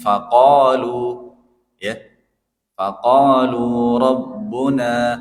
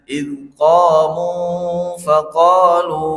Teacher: membaca huruf panjang mad thobi'i yang dua harakat saja itu jangan terlalu panjang